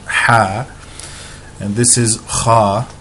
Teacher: this comes up out of the throat, the ha and the kha